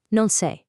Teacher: 3 words shrink down into a quick 2-syllable blur. The pronoun you just melts away, and the negative no fuses right into the verb.